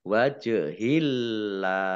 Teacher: lamnya, Allahnya dibaca tipis karena harokat di depannya kasroh.